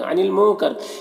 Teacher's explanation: نون میں اخفا ہو رہا ہے، را کے نیچے زیر ہے، را کو باریک پڑھیں گے. قاف حروف مستعلیہ میں سے پر پڑھیں گے اور یہاں پر یا مدہ ہے، ایک الف کے برابر کھینچیں گے.